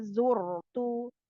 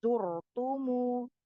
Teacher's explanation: ronya sukun sebelumnya berharokat dhamma dibaca tebal